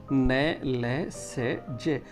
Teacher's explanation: न, ल, से, जे का उच्चारण करते समय जीभ वर्त क्षेत्र को स्पर्श करती है, अतः यह वर्त से ध्वनियाँ कहलाती हैं।